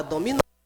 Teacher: o nó é a sílaba pronunciada com mais intensidade, com mais força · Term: sílaba tônica